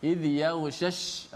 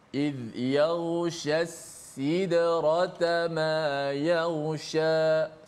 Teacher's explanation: Pertama shin tengah lidah, tengah lidah. Kedua sin di hujung lidah.